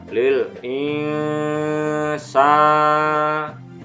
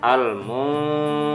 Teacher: nun sukun diikuti huruf Sin dibaca samar ditahan minimal dua harokat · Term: ikhfa